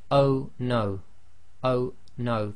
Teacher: if you say oh no oh no the O suddenly stops and there's a slight blocking · the O suddenly stops and there's a slight blocking. That's the what we say in English is a glottal stop. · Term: Hamza